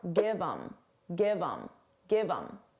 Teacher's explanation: Get rid of the H and it will sound like im. But you can combine it to the word before.